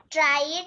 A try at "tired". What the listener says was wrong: No, not tried. T-I-R-E-D. Tired.